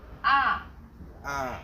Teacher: The fourth tone falls sharply and quickly from a high pitch.